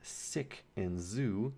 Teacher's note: so s and z, these are your alveolar fricatives. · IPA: [s] [z]